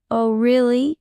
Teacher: should rise with surprise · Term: rising intonation